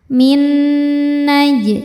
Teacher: Jimnya qalqalah sugro. Karena huruf jim ini sukunnya sukun asli dan ada di tengah bacaan. Maka jimnya ini memantul dengan pantulan yang kecil.